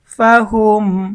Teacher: মিম সাকিনের ইজহার গুন্না ছাড়া স্পষ্ট পড়তে হবে